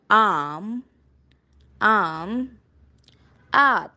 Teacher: it is open back unrounded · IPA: /ɑː/